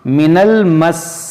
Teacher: یہاں پر دیکھیں سین مشدد ہے، اس کو پڑھنا ہے 2 بار